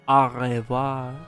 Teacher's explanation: The R in French and German is from the back of the tongue against the roof of the mouth. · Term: French R